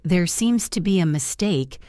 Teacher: your voice should go up slightly at the end like a question. This makes it sound softer.